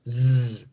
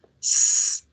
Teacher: You should feel that z produces a vibration, so it's a voiced sound, whereas s does not produce the vibration, so it's a voiceless sound.